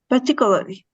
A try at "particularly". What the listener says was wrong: Just try to make the R sound. Yes, but try to make the R sound. So it's par